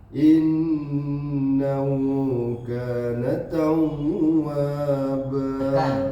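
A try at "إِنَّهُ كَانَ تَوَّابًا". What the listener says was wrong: Kana tawwaba, bukan didengungkan. Kana tawwa.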